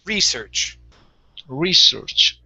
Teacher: a CH at the end, stress at the beginning.